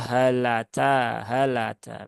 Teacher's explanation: seringkali hamzahnya ini terayun atau tidak jelas suara A-nya